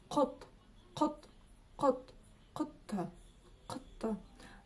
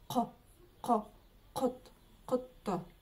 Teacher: буква О произносится просто очень и очень коротко